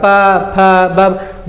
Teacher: ना तो इसमें जीभ काम कर रहा है, ना दांत काम कर रहा है, ना मूर्धा केवल ओष्ठ ही उच्चारित कर रहा है, प फ ब दोनों केवल ओष्ठ देखिए इस तरह से उच्चारित कर रहा है, तो इसीलिए उसका उच्चारण स्थान क्या हुआ, ओष्ठ। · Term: पवर्ग